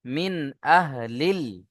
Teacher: নুন সাকিন কে বিনা গুন্নায় জাহির করে তাড়াতাড়ি পড়বো। তাতি নাম্বার নয়ে আছে যেমন মিন আহলিল এখানে মিন বলে গুণনা করা যাবে না। · নুন সাকিনকে বিনা গুণনায় জাহির করে তাড়াতাড়ি পড়বো।